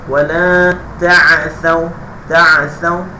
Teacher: Sa tu mesti terjeli. Sa dia mesti jelikan lidah.